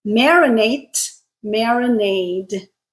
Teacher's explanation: In this case, our voiced, unvoiced sound pair is t and d. They're both alveolar stops